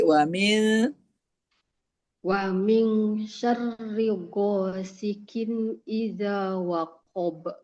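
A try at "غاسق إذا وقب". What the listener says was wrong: Qof-nya jadi qi ya. Qof jadi ka. Hati-hati tetap qof.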